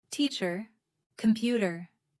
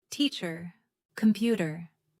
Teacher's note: In British English, the R at the end is often softer or not pronounced.